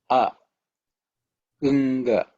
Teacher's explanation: the tongue's position should be the same, but you make a nasal sound